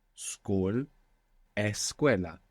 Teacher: you will find many words between English and Spanish that get like an extra e at the beginning in Spanish